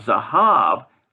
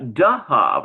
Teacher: There's no arm is, so Roa, and arm is Dara. In other words, the Z changes to a D sound.